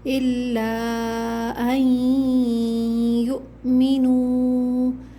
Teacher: حمزہ پہ جب سکون آ جائے تو جھٹکا دیتے ہیں